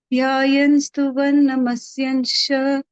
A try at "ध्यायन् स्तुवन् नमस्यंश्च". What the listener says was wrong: Again, stress on the Mahaprana. Bhaktya dhyayan. And here, dhyayan stuvan namasyamscha. It is not namasyanscha, namasyamscha.